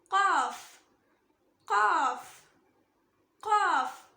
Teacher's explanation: இத நாக்கோட வேர் பகுதி, அதாவது உள்நாக்கு மேல் முரசை டச் பண்ணணும். இது ஹெவி லெட்டர், ஸோ ஹெவியா சொல்லணும்.